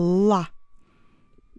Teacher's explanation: Donc, pour bien réussir votre la, vous surveillez votre langue et vous baissez le dos au maximum possible. C'est que le bout de langue qui touche un petit peu les dents et tout le reste, elle est bien en bas. Ça vous fait la. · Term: le son L dur